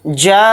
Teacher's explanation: الف مدہ کے بعد حمزہ اسی کلمے میں آ گیا تو یہ مد متصل کی پہچان ہے، اور اس مد متصل کو 4 الف کی مقدار ہم کھینچ کر پڑھیں گے